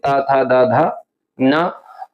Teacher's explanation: ऐसे ही त वर्ग में देखेंगे त, थ, द, ध और इनका जो उच्चारण स्थान होता है वो दंत होता है।